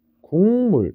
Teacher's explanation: 비음이 아닌 애들이 비음이 되는 겁니다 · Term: 비음화